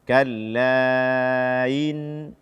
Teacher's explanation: tidak membaca hamzah pada kata inna dengan jelas. Kalla in, tidak.